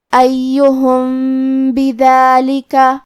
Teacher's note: با حروف الاخفاء الشفوی میں سے ہے اور اخفاء کا معنی ہے چھپا دینا، تو ہم میم کو چھپاتے ہوئے اور غنہ کے ساتھ یہ حکم کو ادا کریں گے